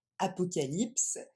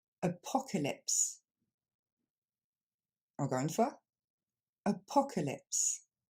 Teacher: Et du coup, ça va pas se dire comme en français, apocalypse, mais on va remplacer ces A par le son E. Et ça nous donne apocalypse.